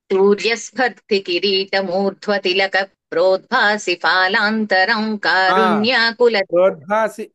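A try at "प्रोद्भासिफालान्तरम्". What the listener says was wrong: ప్రోద్భాసి పిహెచ్ఏ ఫాలాంతరం కదా, మీరు ఎఫ్ఏ చెప్తున్నారు. ప్రోద్భాసి ఫాలాంతరం, నాకు ప్రోద్భాసి ఫాలాంతరం వినపడింది.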